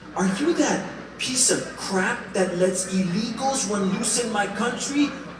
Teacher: Her voice was high-pitched with a pinch of nasality.